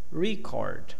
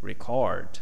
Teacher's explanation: When you have noun, the stress is on the first. When you have verb, the stress is on the second.